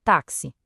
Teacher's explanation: A gente escreve com quatro letras, mas fala cinco sons, porque esse X tem som de KS